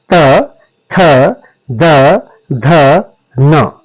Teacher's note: जीभ का संपर्क दांत के साथ करना पड़ेगा तब आपके तवर्ग का उच्चारण होता है। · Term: दंत्य ध्वनियां